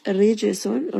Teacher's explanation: ra here is light. Jim is going to have a qalqala.